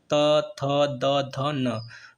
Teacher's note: ता वर्ग का उच्चारण दंती, यानी कि जब तक जीभ दांत में नहीं टच करेगी तब तक त थ द ध नहीं कह पाओगे। · जीभ आपकी दांत में टच कर रही है, तब जा करके इसका उच्चारण हो पा रहा है।